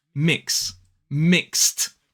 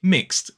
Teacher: t and d are just a phoneme that add to the end of the base word. It does not create a new syllable.